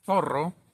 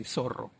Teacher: in Latin American Argentina we say zorro, like the S sound